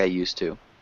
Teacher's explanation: we conflate the D and the T sound